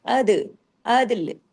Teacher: दाल पे कलकला होगा तमाम बारीक हुरूफ है लाम पे जाके रुकेंगे कलकला नहीं करेंगे कलकला किस पे होगा